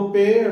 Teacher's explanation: और ये 2 वर्ण हैं, जैसे पेड़ वाला ड, पेड़ लिखे हम पेड़, अब पेड़ शब्द बोलो पेड़, तो जैसे ही ड बोलेंगे तो जीभ का जो नोक वाला भाग होगा वो झटके के साथ नीचे गिरेगा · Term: उत्क्षिप्त वर्ण